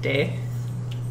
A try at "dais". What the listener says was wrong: You're French. You make a lot of letters silent that don't have to